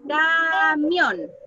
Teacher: Y la sílaba átona es ca. Ca, que suena más bajo, mión, que suena más fuerte. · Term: sílaba tónica